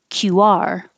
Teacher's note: you put the stress on the second syllable, QR. So make sure you round your lips enough for the war, QR.